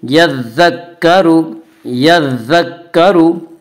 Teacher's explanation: را پیش رو، را کے اوپر پیش ہے، پیش کو جلدی پڑھیں، تھوڑا بھی نہ کھینچیں، معروف پڑھیں، مجہول آواز سے بچیں۔